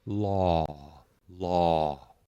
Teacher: It's a non-diphthong or a monothong, and that just means it doesn't drop in quality. It has the same sound and the same presence throughout the word that you're pronouncing. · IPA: /ɔ/